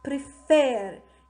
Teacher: this is made of two syllables, prefer. And the second syllable, the last syllable, is stressed.